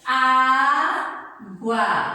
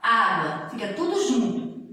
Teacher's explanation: Ditongo, uma vogal e uma semivogal juntinhos na mesma sílaba.